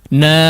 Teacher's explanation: ada gunnah yang dipanjangkan di situ